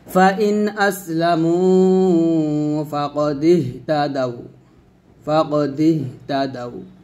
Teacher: এই লিনের হরফে থামলে কোনো রকম টান দেওয়া যাবে না, মানে লিনের হরফ টান টেনে পড়া যায় না, তাড়াতাড়ি পড়তে হয়